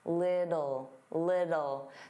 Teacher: native speakers, including me, generally pronounce the T's as soft D's